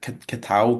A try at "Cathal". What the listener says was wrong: it Cahill? because in Ireland we would pronounce it Cahill? you don't pronounce the T. Cahill.